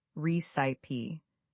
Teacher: You're stressing the first syllable.